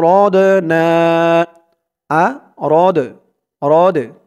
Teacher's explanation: এই দালটা কলকলার হরফ ধাক্কা দিয়ে পড়তে হবে